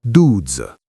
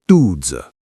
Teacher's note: Falling tone on the du